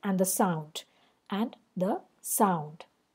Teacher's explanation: 3 syllables and the are the 2 unstressed syllables. Sound is a stressed syllable, anapest.